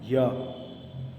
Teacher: जब आप या बोल रहे हैं तो आप एक चीज़ फील कर रहे होंगे, कहीं ना कहीं जीभ आपके तालु को टच कर रही है